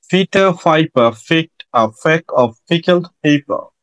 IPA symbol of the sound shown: p